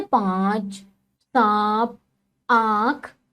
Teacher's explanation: इसे चंद्र बिंदु भी कहते हैं। इस ध्वनि का उच्चारण करते समय मुख और नाक दोनों से एक साथ जो है वो वायु निकलती है, जैसे पांच, सांप, आंख आदि। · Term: अनुनासिक